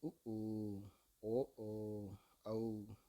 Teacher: இந்த வார்த்தைகள் உதடுகளை குவிப்பதால் இவை உண்டாகின்றன. சொல்லி பாருங்க உதக வந்து குவிப்போம்.